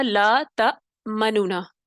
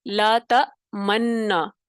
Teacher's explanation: منونا یعنی یہ پڑھنے کے بجائے اس کو ادغام کر دیا گیا، پہلے نون کو دوسرے نون میں داخل کر دیا گیا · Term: ادغام کبیر